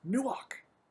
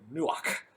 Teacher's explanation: Now, we don't have this word in, pronunciation in English. It's a hard CH, almost a K sound, where we almost spit that word out, the k from the back of the throat